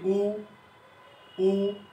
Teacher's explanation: উ বলার সময় জিহ্বার অবস্থানটা পেছনের দিকে চলে যায়, তার পশ্চাৎ উ, জিহ্বাটা উপরের দিকে থাকে, ও ঠোঁটের আকৃতিটা গোলাকৃতি হয়। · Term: উচ্চ, পশ্চাৎ, গোলাকৃতি স্বরধ্বনি